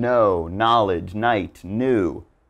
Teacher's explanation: do not pronounce the k just ignore it and give it the n sound